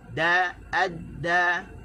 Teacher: Masa nak sebut, hujung lidah terangkat, sentuh di gusi. Da, adda. Okey, bila kita sebut tu, selesai sebutan da. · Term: huruf dal